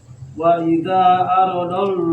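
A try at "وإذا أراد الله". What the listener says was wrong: Kasih panjang dia mad jaiz kalau ini. Ro-nya panjang, ero jangan oro tapi erodallah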